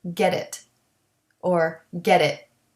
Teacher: t at the end of get though is not stopped because we connect it to the it and it will have a soft d sound